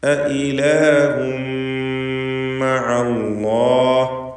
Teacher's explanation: ഹംസ വ്യക്തമാക്കി ഉച്ചരിക്കണം. 2 ഹംസകൾ തുടരെ വരികയാണ്. തൻവീനും ശേഷം മീമുമാണ്.